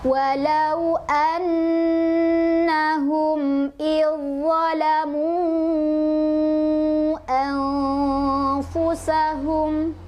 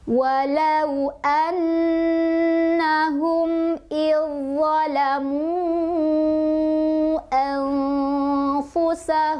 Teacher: Zal sukunnya sudah tidak terdengar, langsung kita ke za sambil ditekan ya, karena ada tasydidnya, sambil ditekan. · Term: idgham mutajanisen